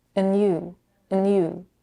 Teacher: She drops the final d in the word and blends it with the next word